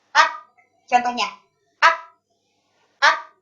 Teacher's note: aliran nafas yang keluar dari huruf kaf itu sedikit saja